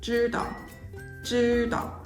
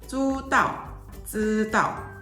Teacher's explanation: For example, in mainland China, this word would commonly be pronounced 知 道, 知 道, with a slightly less stressed second syllable